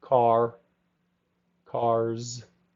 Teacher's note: Make sure you say the R in the back, cars.